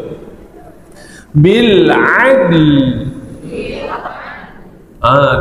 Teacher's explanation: Sebut al, lidah kita naik ke atas, guna bunyi l akhir, betul? Bil adl, tu dia.